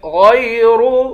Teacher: غین اور را دونوں کو موٹا پڑھیں گے